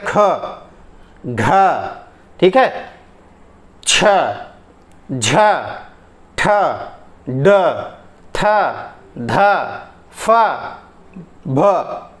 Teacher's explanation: ऐसे ख, घ, ठीक है, छ, झ, ठ, ड, थ, ध, फ, भ, ये सब क्या है, ज्यादा प्राणवायु निकाल रहे हैं। जहां पे ज्यादा प्राणवायु निकले वो आपके महाप्राण हैं। महाप्राण कौन कौन से हैं, दूसरा और चौथा आपके महाप्राण हैं।